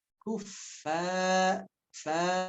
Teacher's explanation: fa-nya ada nafas keluar jelas.